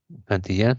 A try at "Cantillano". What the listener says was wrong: Sí, profe, Cantillano. No, con O al final, por si acaso.